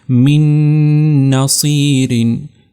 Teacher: اگلی مثال یہاں پر ہمارے پاس نون کی ہے کہ جب نون ساکن تنوین کے بعد یرملون میں سے یہ نون آئے تو یہاں پر بھی ادغام کرنا ہے اور ادغام کے ساتھ ساتھ غنہ، تو اس کو پڑھیں گے ہم من نصیرین۔ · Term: ادغام مع الغنہ